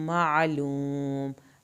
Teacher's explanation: आइन पे हल्क से आवाज़ निकालेंगे. लूम, वाव साकिन को खींचा और मीम को नहीं हिलाना.